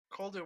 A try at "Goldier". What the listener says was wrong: It's with a G. Goldier.